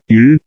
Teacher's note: நாவின் நுனி வளைந்து மேல்நோக்கிச் சென்று மேல் அண்ணத்தை தொடுகிறது